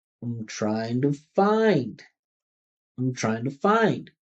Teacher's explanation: Listen how much find stands out when I make those function words small.